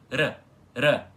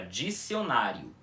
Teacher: o som fraco do R, aquele que é assim, R, R, só encostando a língua no céu da boca. E, para quem não sabe, esse R, que é o som fraco do R no português, é quando ele aparece em posição intervocálica, ou seja, entre duas vogais, como por exemplo na palavra dicionário.